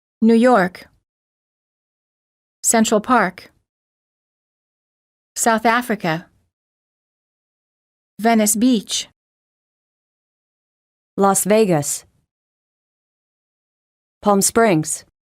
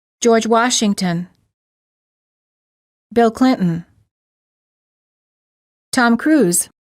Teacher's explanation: names of places and people stress the last word